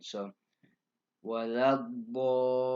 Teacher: It's six. There's something called med lazim, and the med lazim, you hold it for 6 counts. So on the wala dallin, you hold that for 6.